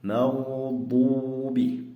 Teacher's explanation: Mana bu joyda ham g'ayril maghdubi g'o harfi yo'g'on o'qilinadi.